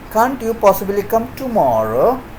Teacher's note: there also uses falling rising tone can't you possibly come tomorrow so here the time tomorrow has been emphasized